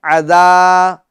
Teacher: ذال اس میں الف مدہ ہوگا، یعنی ایک الف کی مقدار کھینچیں گے، عذا۔ اور دوسری بات، ذال کو ہمیں نرمی کے ساتھ پڑھنا ہے، ٹھیک ہے، اور باریک پڑھنا ہے۔